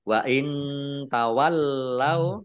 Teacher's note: nun sukun bertemu dengan huruf ta bacaan Ikhfa dibaca samar-samar